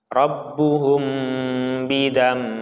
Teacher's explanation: Rabbuhum. Nah, ini mim sukun bertemu ba. Jadi ini namanya ikhfa syafawi. Jadi harus ditahan.